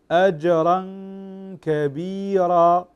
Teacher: أسمع فقط الغنة التي مقدارها حركتين في الإخفاء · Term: إخفاء حقيقي